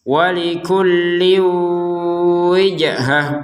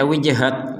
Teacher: Kalau kita berhenti, maka dia akan menjadi huruf ha, akan terbaca sebagai huruf ha.